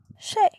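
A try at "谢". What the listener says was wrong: Şey. Şey. ikinci ton болып кетеді biraz.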